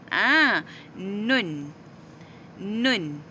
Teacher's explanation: hujung lidah ditekan ke lelangit depan sedikit ke belakang dari makhraj huruf lam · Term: huruf nun